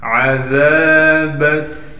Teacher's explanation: ذال کے بعد الف مدہ ہونے کی وجہ سے ذال کو ایک الف کی مقدار کھینچیں گے اور با کو سین سے ملا دیں گے اس لیے کہ سین پر تشدید ہے۔ · با کو سین سے ملا دیں گے اس لیے کہ سین پر تشدید ہے۔ تشدید ہونے کی وجہ سے تھوڑا ٹھہراؤ کریں گے اور سین میں سیٹی نکالیں گے۔